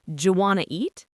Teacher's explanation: The individual sounds blend together, and sometimes letters are even dropped completely, like the T in want to.